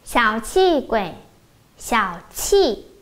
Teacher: Các bạn lưu ý chi chúng ta bật hơi mạnh ha.